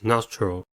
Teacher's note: Nostril has two syllables and the stress is at the first one. The first syllable is nos.